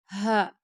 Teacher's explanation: ہا گلے کے آخری حصے سے ہا